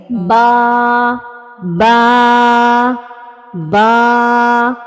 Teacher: مثال کے طور پر با کا مخرج کیا ہے کہ دونوں ہونٹ آپس میں جوڑنے سے با ادا ہوتا ہے۔